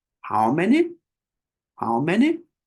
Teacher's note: how many meaning our voice Rises up at the end so our voice goes normal normal normal for the first part in this case how and then Rises up at the end